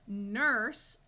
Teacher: Nurse, likewise, ends in the unvoiced S sound.